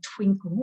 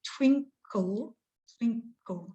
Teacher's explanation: we're putting the emphasis or the stress at the beginning of the word and we're allowing that call at the end just to taper